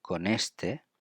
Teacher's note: we put together con and este because it's N and E.